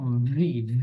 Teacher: উপরের দাঁত নিচের ঠোটের সাথে লাগবে এটা ভাইব্রেট করবে এসটি এটা ভাইব্রেট করবে ফোনের মত ফোন ভাইব্রেট করে না যেভাবে